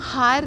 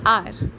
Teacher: For example आर, हम हार नहीं कहते हैं, H साइलेंट होता है, सो दिस बिकम्स आर. और इसका बिगिनिंग साउंड आ रहा है, आर, इसलिए हमने एन लगाया है.